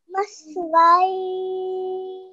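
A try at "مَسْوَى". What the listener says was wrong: Okay, so we need to make the alif sound because this is an alif mother with the waw. We need to make that first and then add the ya at the end. Maswai. Okay, so what we need to do here, this is for everyone, because you have a waw with an alif mother, we need to make sure that we elongate that and then we add the yar at the end.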